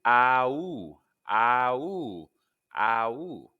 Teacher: begin with an open mouth for a and round into an o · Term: ow sound